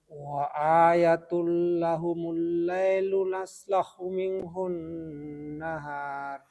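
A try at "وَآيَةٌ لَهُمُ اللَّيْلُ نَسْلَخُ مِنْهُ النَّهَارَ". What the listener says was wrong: Tadi huruf ya-nya dibaca panjang. Wa ayatun. Ya, yang benar wa ayatun.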